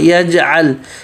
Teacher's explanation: جیم پہ قلقلہ ہوگا لیکن درمیانہ قلقلہ ہوگا